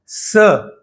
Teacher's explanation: जैसे स इस शब्द का उच्चारण किया तो आप देखेंगे कि हवा का प्रवाह मुंह से निकलता है। उसके कारण मुंह से थोड़ा संघर्ष होता है। घर्षण होता है। · हवा का प्रवाह मुंह से निकलता है, उसके कारण मुंह से थोड़ा संघर्ष होता है, घर्षण होता है। तो स, श और स, ये तीनों शकार वाले जो शब्द है, इनका उच्चारण महाप्राण उच्चारण कहा जाता है, क्योंकि इसमें हवा का प्रवाह अधिक होता है।